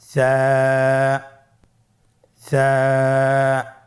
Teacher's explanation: সা হরফটির মাখরাজ হলো উচ্চারণের স্থান জিহ্বার আগা সামনের উপরের 2 দাঁতের আগার সঙ্গে লাগিয়ে উচ্চারিত হয়